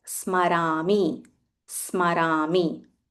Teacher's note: There is half sa and a full ma.